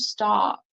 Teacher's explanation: usually I would say stop like with an a sound